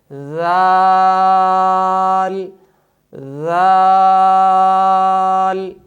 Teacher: صفت استفعال اور انفتاح کی وجہ سے اس حرف کو خوب باریک ادا کریں گے۔